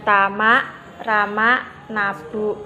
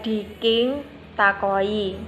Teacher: Ada bunyi glotal plosif, ada bunyi K plosif dorsovelar.